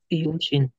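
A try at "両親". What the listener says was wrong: So, importante yung pag-pronounce yung minasang Ryo. Ito naman, Ryushin. So, Ryoshin, Ryushin naman to.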